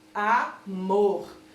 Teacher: o mor é a sílaba mais forte da palavra. Por isso, trata-se de uma oxítona. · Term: sílaba tônica